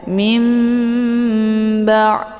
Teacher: Ini dinamakan dengan iqlab ya. Cara bacanya nunnya dibalikkan ke dalam bunyi mim ya, dengan cara dibaca dengung. Mim ba. Jadi sudah jelas ini bukan nun lagi yang dibaca ya, karena nun sukunnya sudah dibalik kepada mim sukun.